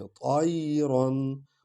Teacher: تا اور یا کو اکٹھے پڑھیں گے اور یا کو لین انداز میں